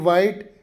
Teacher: ಇಲ್ಲಿ ವ ಧ್ವನಿ ಕೇಳ್ತದೆ, ಎಚ್ ಸೈಲೆಂಟ್ ಆಗ್ತದೆ.